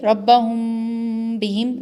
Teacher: ربہم بہم، ناک کے اندر آواز جو ہے، ناک کے اندر آواز جو گونج رہی ہے اسی کو غنہ اور اخفاء کہتے ہیں